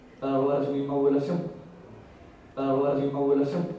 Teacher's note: es un caso de la elisión completa de la nasal bilabial